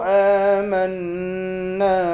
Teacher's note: حمزے کے اوپر بھی کھڑا زبر ہے، اس کو بھی ایک الف کی مقدار کھینچ کر پڑھیں گے۔ میم کو نون کے ساتھ ملا کر نون مشدد پر غنہ کریں گے، ایک الف کی مقدار کھینچ کر بھی پڑھیں گے، الف حرف مدہ ہے۔